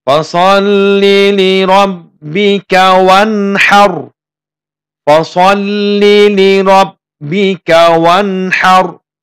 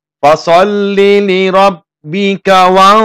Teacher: nun sukun bertemu huruf H. Fasalli li rabbika wanhar. Fasalli li rabbika wanhar. Ya. Tidak dibaca dengung. Dan kalau misalnya dengung, salah membacanya.